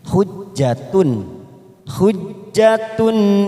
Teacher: situ ada tak marbuto tanwin atau Jumat bertemu dengan huruf hamzah namanya bacaan izhar halqi kita baca jelas tanpa mendengung